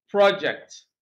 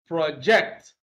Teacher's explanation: stress is on the first syllable, project. Now, if we use the same word as a verb to mean, to communicate clearly, then stress is on the second syllable